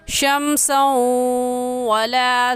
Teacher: यहाँ पर तनवीन के बाद हरूफ़े यरमलून में से वाव आ गया है, इस वजह से गुन्ना करने के साथ साथ हम इदगाम भी करेंगे, यानी इस तनवीन को इस वाव के साथ मिलाकर पढ़ेंगे